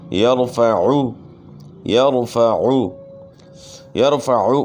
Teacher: عین کی آواز گلے کے درمیان سے نکالنی ہے، یرفع نہیں پڑھنا، یرفع غلط ہے، پھر حمزے کی آواز ہو جائے گی، تو عین کو حمزہ سے تبدیل نہیں کرنا۔